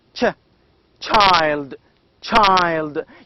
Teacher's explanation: Now the second one, as in child, is represented as in this simple, that is ch, child, child. You can feel that there is a sound t before sh. It's ch.